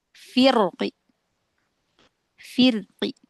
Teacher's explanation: Harakat kasrah. Jadi tanwinnya diganti dengan kasrah lalu dikecilkan suaranya, volumenya dikecilkan, ee harakatnya juga enggak sampai satu harakat, lebih ke lebih pendek. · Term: rom